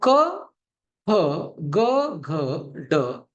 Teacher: क वर्ग जो होता है वो कंठ से इसका उच्चारण होगा। उच्चारण स्थान जो है इन वर्णों का, इन 5 वर्णों का, वो कंठ है। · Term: कंठ्य वर्ण